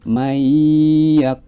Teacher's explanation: Tetapi karena ini adalah bacaan idhom bihunah, maka nun sukunnya itu langsung dimasukkan ke huruf ya. Mayyakulu. Nah, kita juga harus membacanya dengan dengung.